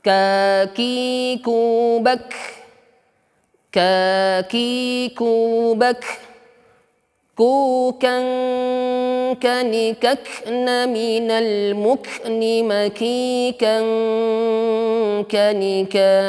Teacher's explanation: Jangan hams, ya, nampak tapi syiddah enggak nampak. Nah, Kaf ini sifat hamsnya lebih nampak ketika dia sukun. Adapun ketika dia tidak sukun, hanya sedikit saja nampak. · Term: huruf kaf